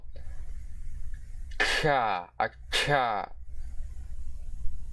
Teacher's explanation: Now we have an aspirated version of our good old palatal plosive, or voiceless palatal plosive. So it's the voiceless palatal aspirated plosive consonant.